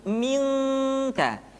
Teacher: Ketemu kaf, maka dominan kepada huruf eng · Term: ikhfa